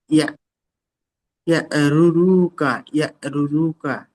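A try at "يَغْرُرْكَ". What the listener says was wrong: ইয়া হবে না, ইয়াগো। গয়ন আছে ইয়াগো। ইয়াগো রুরুকা।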